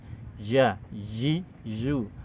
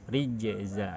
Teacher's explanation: Rijza, dia kuat bertumpu kepada makhraj. Artinya tengah lidahnya menempel ke langit-langit tengah, dia kuat bertumpu yang membuatnya suara tidak berjalan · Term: syiddah